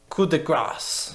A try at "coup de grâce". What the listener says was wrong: Coup de gras. Non, c'est coup de gras. Tu prononces pas le CE. C'est coup de gras.